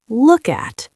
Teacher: The K sound links smoothly to the A sound. This linking makes English sound fluid like a river, not like separate drops of water.